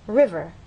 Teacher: you'll look in a dictionary and understand that the first syllable is stressed